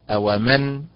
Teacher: اومن فاعل بالنبر على حركه الميم